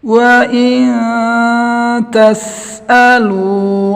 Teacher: Nun mati bertemu ta, hukumnya ikhfa, dibaca mendengung 2 ketukan.